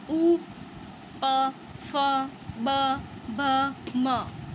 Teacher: प, फ, ब, भ, म, ओष्ठ का प्रयोग हो रहा है, इसलिए इसको ओष्ठ्य ध्वनि कहा जाता है।